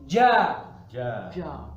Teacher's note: lidah bagian tengah pada posisi langit-langit atas · jadi lidahnya yang tengah diangkat ya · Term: wasatul lisan, Tengah lidah